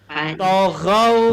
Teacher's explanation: Ujung lidah berada di gigi atas bahagian depan. Ta tebal.